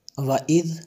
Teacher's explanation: ذال کو دبا کے نہیں پڑھتے، نرم پڑھتے ہیں